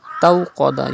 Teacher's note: You have to read Wawleen without stretching. And then you have to pronounce Qaf with thicker voice because Qaf is a Mustaliya letter